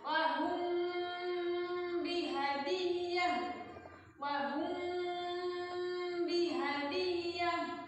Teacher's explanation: Mim sukun bertemu dengan ba. Bacanya ditahan 3 harokat, jangan asal lewat · Yang kedua, ikhfa syafawi. Ikhfa syafawi itu mim sukun bertemu dengan ba. Dibaca gunnah juga 3 harokat.